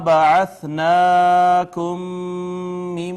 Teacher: میم ساکن کے بعد ایک اور میم آ گئی، ادغام شفوی ہو گیا